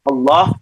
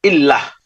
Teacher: Jadi kalau diawali dengan fathah itu bacaannya tuh tebal. Tebal. Allah, kalau misalnya diawali dengan kasroh bacanya tipis.